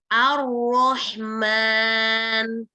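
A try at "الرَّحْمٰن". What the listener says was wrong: Mulutnya O ya, nggak boleh O coba. Nah begitu, nggak boleh bibirnya dibulat-bulatkan ya.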